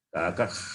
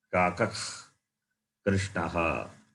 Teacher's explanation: the sound comes from the base of the root of the tongue.